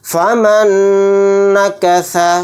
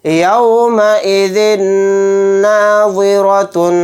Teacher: ذال کے نیچے دو زیر ہیں یعنی تنوین کے بعد نون آ گیا تو یہاں پر بھی ادغام غنہ کا قاعدہ ہوگا. نون پر تھوڑی دیر آواز کو روک کر غنہ اس طرح کریں گے یومئذ ناظرۃ.